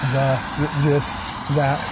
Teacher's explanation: sticking your tongue in between your teeth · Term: th sound